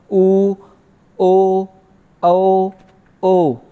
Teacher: ऊ, ओ, औ, ओ, यानी इन पांचों की आकृति यानी पांचों का उच्चारण कर रहे हैं, तो हमारे मुख की आकृति, हमारे ओठों की आकृति एक वृत्त के समान हो रही है, तो इसलिए इनका नाम हमने वृत्तमुखी दिया है।